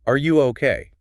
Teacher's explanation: Do you hear how the voice drops down?